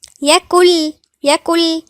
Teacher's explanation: النون لا تنطق نهائي كأنها مش موجودة، كأن احنا بنقول كاف واو لام.